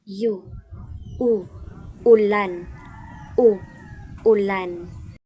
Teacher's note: Ang panghuli ang patinig na U. Isang mataas at likod na patinig